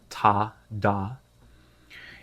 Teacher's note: this would be our front articulation with the tip of our tongue